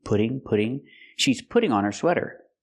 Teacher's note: We hear the double T in putting pronounced as a fast D.